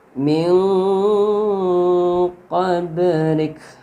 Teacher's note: Jadi ini qaf ini huruf ikhfa. Jadi nunnya dibaca samar dengan dengung.